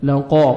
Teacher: قاف کو موٹا کر کے پڑھنا ہے